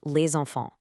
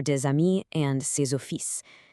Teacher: that silent S suddenly comes alive as a Z sound